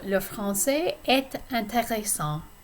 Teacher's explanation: when I'm connecting et and intéressant, the T is going to be pronounced